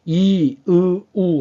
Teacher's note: 혀끝이 점점 목구멍 쪽으로 들어갑니다 단 높이는 똑같죠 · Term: 전설 모음